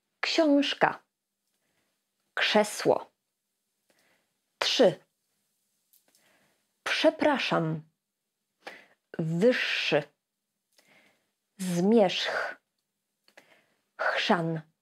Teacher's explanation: W tych wszystkich słowach ż/rz, pisane jako rz albo z z kropką (ż) czytamy jako sz.